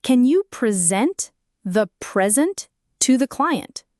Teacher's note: The verb present has the stress on the second syllable sent. This means scent is longer, louder, and often slightly higher in pitch. The first syllable pre is unstressed. · The noun present has the stress on the first syllable pre. This syllable is prominent.